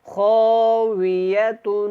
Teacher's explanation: قریۃ وہی خاویۃ، وہی خاویۃ، خاویۃ، یا کو لمبا نہیں کرنا اور واو کو جب ادا کرنا ہے ہونٹوں کو گول کرنا ہے، خا کو موٹا پڑھنا ہے